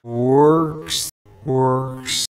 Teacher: Even though he says works twice, the letters sound different because they have a different pitch.